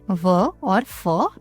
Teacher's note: दंतोष्ठ यानी निचले होठ और ऊपर जो दांत हैं उनकी सहायता से व और फ बोले जाते हैं